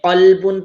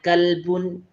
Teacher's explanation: صرف فرق یہ ہوا کہ اس نے قاف کو موٹا کرنے کی بجائے باریک پڑھ دیا